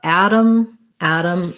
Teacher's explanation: both of them have first syllable stress ah black cat vowel